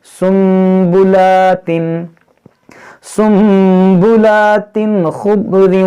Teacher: پر چھوٹا سا یہ میم لکھ دیا جاتا ہے، کیوں، کیونکہ یہاں پر نون ساکن کو نہیں پڑھیں گے، اس کو میم کو پڑھیں گے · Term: اقلاب